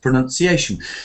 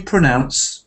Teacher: sometimes a common mistake is to combine those two words pronounce and pronunciation one has an uh and one has an ow